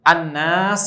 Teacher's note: ada gunnah yang dipanjangkan di sana masuk ke pangkal hidung